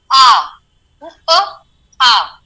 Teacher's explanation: तो मात्रा का कंसेप्ट ये है कि कितने समय तक उस स्वर का आप उच्चार कर रहे हैं, उस वॉवेल का उच्चार कर रहे हैं, तो आ का उच्चार जब आप जनरली कर रहे हैं तो 2 मात्रा का करते हैं